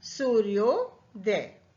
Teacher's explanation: करेंगे तो इसका प्रथम पद होगा प्रथम अक्षर होगा हमारा उ आ और उ को जब हम जोड़ते हैं जब हम इनका मेल करते हैं तो बन जाता है ओ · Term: स्वर संधि